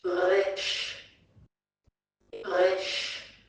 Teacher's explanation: Just like when gargling water in the back of your mouth.